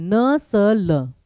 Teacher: जो कि दांतों पे नहीं दांतों के पीछे मसूड़ों पे टच करती है। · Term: वर्स ध्वनियां